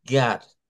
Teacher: nos va a dar un sonido como que fuera una a dentro de las palabras que llevan o en medio de consonantes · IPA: /ɑ/